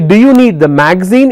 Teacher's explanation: So when I say do you need the magazine, it's a rising tone.